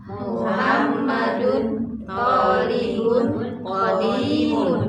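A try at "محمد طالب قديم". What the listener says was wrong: hati-hati madnya linnya pendek thibun linnya enggak boleh panjang sekali lagi.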